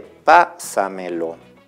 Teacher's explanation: es una palabra que tiene esa elevación en la cuarta sílaba o en la anterior a la antepenúltima, si le quieren llamar así. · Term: sobreesdrújulas